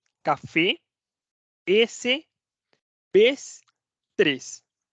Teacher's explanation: es una vocal cerrada sí es la e cerrada